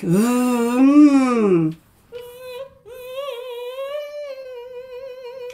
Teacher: V is leaky air here and nothing at the back